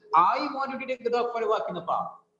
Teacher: the stress is on I